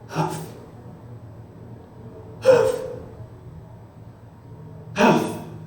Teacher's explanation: Quando eu falo Huff, não é Huff, Huff, Huff, eu mantenho a glote aberta. Então, esse fonema, ele faz abrir a glote e vibrar ela aberta, tá?